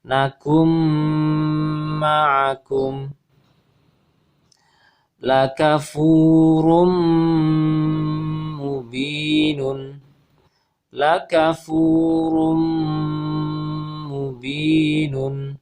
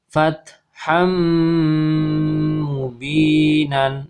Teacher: nun sukun bertemu dengan mim, maka suara nun sukunnya lebur, hilang, berubah menjadi huruf mim. Nakum, kemudian disertai dengan ditahan.